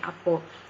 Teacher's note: Antara ciri yang paling ketara ialah perubahan vokal A di hujung perkataan kepada vokal O